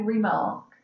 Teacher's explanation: mark is stressed so that has that stronger emphasis · we don't put the oomph in our voice on the re section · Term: unstressed syllable